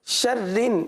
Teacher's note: شرن یہاں پر را کو باریک پڑھیں گے اور رن نون کے ساتھ ملے گا، نون مشدد ہے، غنہ کیا جائے گا، اور ایک بار پھر وہی توجہ دلاؤں گا کہ غنہ کی مقدار ایک الف تک کرنی ہے۔